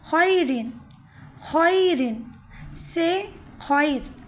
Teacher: 6واں قاعدہ ہے، را ساکن سے پہلے یا آ جائے۔ را ساکن ہو اور اس سے پہلے یا آ جائے تو را کو باریک پڑھیں گے، یعنی وہ را باریک پڑھی جائے گی۔